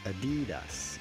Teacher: in English or American it is generally pronounced Adidas insisting or stressing on the middle syllable